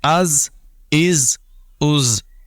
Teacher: حمزہ زا زبر از، حمزہ زا زیر از، حمزہ زا پیش از، از از از۔ زا میں سیٹی کی آواز نمایاں کریں گے